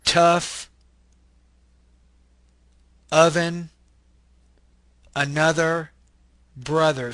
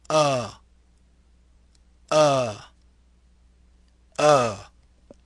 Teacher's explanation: so the sound is kind of like a uh uh uh this is a mid Central unrounded LAX vowel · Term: wedge